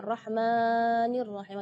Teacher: tidak boleh lebih madnya dari dua harakatnya